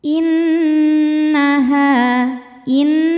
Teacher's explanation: inaha in nunnya dihukumi gunah addadah karena Nun ber bertasdid ya cara bacanya berdengung bunyi n tahan sampai ada suara masuk hidung kurang lebih dua harakat